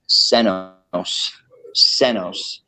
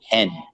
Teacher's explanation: the word for old is senos senos which the sen part over time eventually turned into hen in modern Welsh